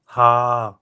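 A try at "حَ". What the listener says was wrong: হা। হা, হা লম্বা হবে না। কেন লম্বা হবে না? হরকতের উচ্চারণ কি করতে হবে? হরকতের উচ্চারণ দেখেন কি করতে হবে? হরকত আসছে, এখন আর লম্বা করার সুযোগ নেই। খালি হা থাকলে তখন হা লম্বা হবে, কিন্তু হরকত আসছে বিদায় এখন আর দ্রুত লম্বা হবে না, দ্রুত হা, হা।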